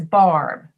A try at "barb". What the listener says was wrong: You just said bar. And I'm saying barb. But listen to the difference in the first B and the second B. Barb. Barb.